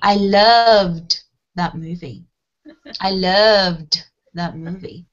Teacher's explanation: So you can see I'm pronouncing the d, d, d, okay? Not the t, t, t, okay? So we don't add a syllable, okay? So we use the D sound when the sound before the ED is buzzy or voiced, okay?